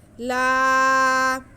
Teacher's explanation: لام پہ زبر ہے اور ساتھ میں الف ہے، تو یہ الف مدہ ہو گیا، لام کو ہم کھینچ کے پڑھیں گے